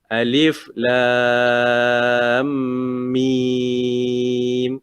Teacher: Ringan je mim tu. Tapi lam tu ditekankan, diberatkan.